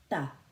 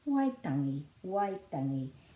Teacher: Waitangi, and this is a flattish T, ta. Waitangi, Waitangi, and the emphasis is on the first syllable Y because it's a double vowel.